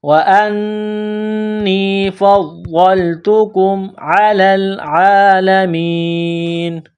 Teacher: جب اس آیت پر سٹاپ کریں گے، وقف کریں گے تو نون کو سائلنٹ کریں گے